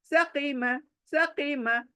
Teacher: आवाज ई की आएंगी लेकिन मोटा ही पढ़ना है